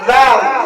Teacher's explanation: জিহ্বার আগা দাঁতের আগা থেকে নরম করে বের করব।